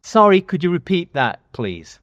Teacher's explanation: I want everyone to listen to how he goes very high in pitch